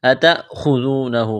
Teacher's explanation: خا کو موٹا کرنا ہے، ذال کو نرم کرنا ہے، واو مدہ ہے، ایک الف کے برابر کھینچنا ہے